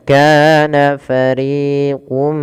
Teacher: RI juga sama dua harakat jangan dibedakan antara Ka dan RI harus sama panjangnya